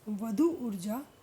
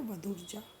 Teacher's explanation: वधु में दीर्घ उ है और ऊर्जा में भी दीर्घ उ है, दोनों मिलकर दीर्घ उ ही बनाते हैं और शब्द बनता है वधुर्जा। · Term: दीर्घ संधि